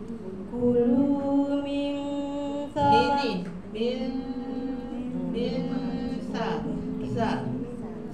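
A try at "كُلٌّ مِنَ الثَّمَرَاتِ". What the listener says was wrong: sa tu pun kena keluar lidah juga sebab makhraj sa kan.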